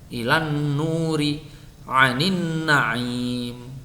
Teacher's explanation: dengungnya harus diperjelas, lamanya minimal 2 harokat.